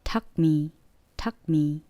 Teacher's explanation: 원래는 tucked, 중간에 t 발음이 들어가야 되는데 빨리 하다 보면 t 발음이 들리지 않고 tuck me 라고 발음이 되거든요.